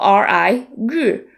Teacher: the r sound is a retroflex sound requiring you to curl the tip of your tongue backwards and then the vowel sound is a little unusual as well